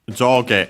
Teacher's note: Joge on its own, top and bottom, up and down and so on, is accented on the first syllable.